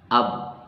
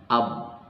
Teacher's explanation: Oh, ternyata tekanannya berada di bibir. Jadi ba itu keluar dari bibir, atau makhraj huruf ba itu adalah dari bibir atau syafatain.